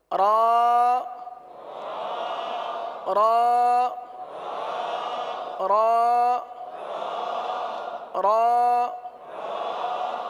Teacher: آپ را کے لیے زبان جو ہے یہ دانتوں کی تالو کی جانب والے حصے کی طرف مڑتی ہے اور سیدھی ہوتی ہے، اس طرف جاتی ہے اور سیدھی ہوتی ہے.